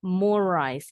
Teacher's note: ini bacanya cukup sekali r-nya walaupun ada dua tidak perlu dipanjangin